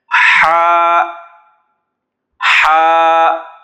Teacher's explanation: یہ ہا یہ حلق کے درمیان سے ادا ہوتا ہے، جیسے ہم سانس لیتے ہیں نا تھکا ہوا انسان ہو تو بیٹھتا ہے یا کھڑا ہوتا ہے تو تھوڑا سا سانس لیتے ہیں، ایسے ہا کی ادائیگی کے وقت تھوڑا سا سانس لیا جائے گا.